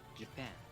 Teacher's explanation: The stress falls on the second syllable.